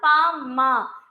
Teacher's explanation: இரு உதடுகளும் ஒட்டும் போது பா மா பிறக்குது